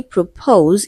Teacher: So option B propose it is stressed on the second syllable